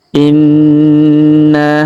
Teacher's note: Huruf na kita tahan dan kita dengungkan 2-3 harokat karena berharokat tasdid.